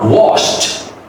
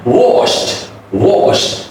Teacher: The final sound in wash is a sh sound. So because it's an unvoiced consonant sound, so the final D will be the T sound.